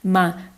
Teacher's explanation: O Mi é a sílaba mais forte, foi acentuada corretamente na regra das proparoxítonas também.